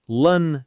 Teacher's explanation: Strong on the first part and a relaxed schwah on the second.